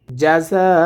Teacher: যা এখানে 4 আলিফ টেনে পড়তে হবে, কারণ মদের হরফের ওপরে মোটা চিহ্নটি এসেছে